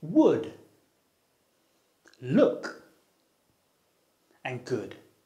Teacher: its technical name is the near-close, near-back vowel. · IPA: /ʊ/